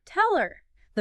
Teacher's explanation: the H sound often just disappears